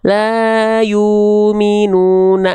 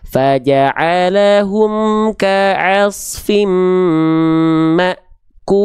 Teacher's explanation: La yumuna enggak boleh. Harusnya dibaca terputus karena dia punya sifat namanya syiddah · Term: hamzah sukun